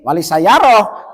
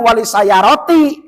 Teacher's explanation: Kalau wakof menjadi ha. Kalau wasol menjadi ta. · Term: ta marbutoh